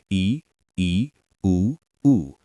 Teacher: संवृत मुंह बहुत कम खुलता है